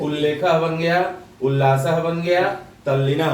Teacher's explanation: तो यह जो त के बाद ल आया तो त के स्थान पे ल हो जाता है